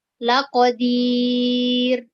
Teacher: ketika huruf ro itu sebelumnya berbaris kasro, maka dibaca tipis